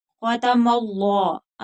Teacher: खा हरूफ मुस्तालिया है, पूर पढ़ेंगे। खतमल्लाह अल्लाह का लाम जो है वो पूर पढ़ेंगे मोटा क्योंकि पिछले हर्फ के ऊपर जबर है